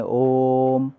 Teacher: प्लुत है, क्योंकि इस ओ को बोलने में ज़्यादा समय लगेगा